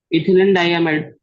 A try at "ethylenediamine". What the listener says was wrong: It's not diamide, diamine. Carbon is there.